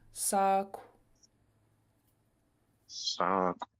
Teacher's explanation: And in Lingit, you can make a rounded sound at the end of a word. And so all you're doing is rounding your lips and breathing out the K sound. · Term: rounded K